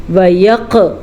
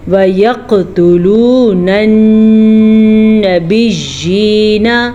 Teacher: کلکلا قاف کے اوپر ساکن ہے تو کلکلا کرنا ضروری ہے